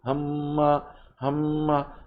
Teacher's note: আপনি নেজাল সাউন্ডে মিম জবর মা পড়বেন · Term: ওয়াজিব গুন্না